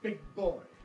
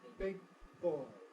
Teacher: You can't hear the release of the velar because it's masked, as we say, by the bilabial articulation.